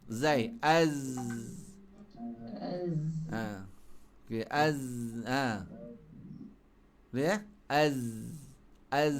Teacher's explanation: Suara lepas tapi nafas tahan.